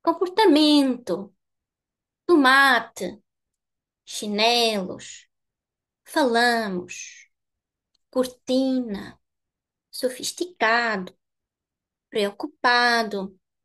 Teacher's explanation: The penultimate syllable is the highest.